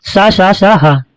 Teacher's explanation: इनके उच्चारण से घर्षण होता है, घर्षण से ऊष्मा निकलती है अतः इन्हें ऊष्म व्यंजन कहा जाता है